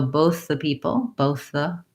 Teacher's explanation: these two can kind of link, and I kind of move from voiceless into voiced TH